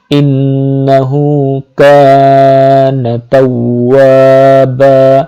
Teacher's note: আলিফের পূর্বে জবর, তাওয়া এক আলিফ পরিমাণ লম্বা হবে। বা বান হওয়ার কথা ছিল কিন্তু ওয়াকফ করার কারণে এখানে একটা জবরের উচ্চারণ হবে এবং আলিফ থাকায় একটা জবরের সাথে মিলে এক আলিফ পরিমাণ লম্বা হবে।